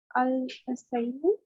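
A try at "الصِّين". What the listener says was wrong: सैनू नहीं है, सीनू है।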